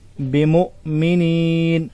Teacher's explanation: حمزہ ساکن کو جھٹکے سے پڑھیں گے